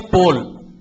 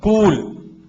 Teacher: You don't elongate the O sound there. But when you write pool, C-O-O-L, you elongate it little further.